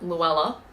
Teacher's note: If you use my name, for instance, to think about that, so in an Australian accent, Luella, say Luella in an Aussie accent and it sits around your back teeth, versus if you say it in a British accent, Luella, Luella, they're sitting right behind the front teeth.